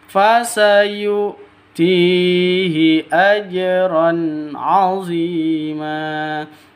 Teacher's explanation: Ajron jim mati, jim sukun. Ini harus dipantulkan ke huruf jimnya. Kenapa? Bacaan qalqalah sugro karena ada di tengah.